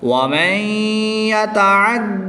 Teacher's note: نون ساکن کے بعد یا حرف یعملون میں سے ہے تو یہاں پر ادغام مع الغنہ ہوگا، غنہ کر کے پڑھیں گے